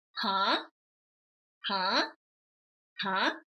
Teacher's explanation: it starts low and goes up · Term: second tone